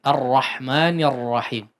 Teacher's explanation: ro dalam bahasa Al-Qur'an memang tidak terlalu bergetar ya, atau getarannya takrirnya ya tidak terlalu banyak, tapi tidak juga hilang ya